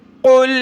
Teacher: قاف کو موٹا کریں گے